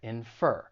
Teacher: the stress is on the second syllable infer and I don't think the pronunciation is too challenging just